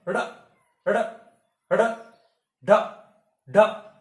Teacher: तो जब हम इनको बोलते हैं तो ऐसा लगता है कि अंदर से कोई इनको फेंक रहा है, बाहर फेंक रहा है। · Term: उत्क्षिप्त व्यंजन